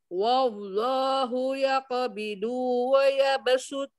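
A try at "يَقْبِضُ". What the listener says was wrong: Qabidu, jangan du. Du, tempelkan sisi lidahnya ke gigi geraham atas. punyanya di kanan, jadi nempelnya di kanan. Ya qabidu. Ujung lidah, tapi sisi lidah.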